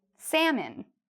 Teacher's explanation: Don't worry about the l, it's silent.